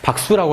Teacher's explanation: 기억 받침 뒤에서 시옷이 된소리 난다라는 그 된소리 환경으로 그 된소리의 이유를 분명히 설명할 수 있기 때문에 이렇게 예사소리를 적어줘야 되는 거고요.